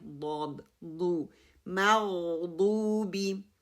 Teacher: غین کے لیے میں نے غین کو موٹا کرنا ہے، ضاد کے لیے ضاد کی دمہ کو بھی میں نے کلیئر کرنا ہے، ضاد مخرج کو بھی. ضاد مخرج جو ہے پیچھے والی جڑوں سے آگے لام کے مخرج تک آتی ہے. واو ساکنہ ہے، اینڈ با کی کسرہ کو کلیئر کرنا ہے.